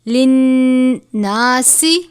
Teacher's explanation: سین کو پڑھتے وقت آواز سیٹی کی طرح نکلنی چاہیے کیونکہ یہ حروف صفیریہ میں سے ہے